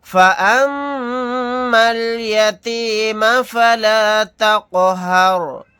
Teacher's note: آگے آیت تقہر، یہاں پر میم کے اوپر تشدید ہے تو یہاں پر ہم غنہ کر کے پڑھیں گے، پھر یہاں پر قاف ساکن ہے تو یہاں پر قلقلہ کر کے پڑھیں گے